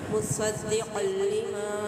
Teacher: مصدق لما، مصدق، صاد مستعلیہ رکن کر کے ادا کریں گے، دال کو شدت مضبوطی سے ادا کریں گے۔ تنوین کے بعد لام تشدید ہے تو ادغام بلا غنہ ہوگا